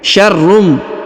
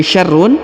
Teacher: huruf tanwin berharokat tasdid bertemu dengan mim ya, maka huruf unnya atau tanwin unnya melebur menghilang ke huruf mim ya. Syarrum, jadi bukan lagi syarrun tapi syarrum.